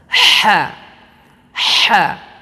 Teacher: Di mana letak makhraj huruf ha kecil ini adalah wastul hilqi, di bagian tengah tenggorokan. Ha. Jadi seperti seseorang yang sedang kepedasan.